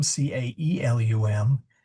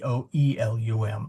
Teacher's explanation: in ecclesiastical Latin, the AE and the OE are identically pronounced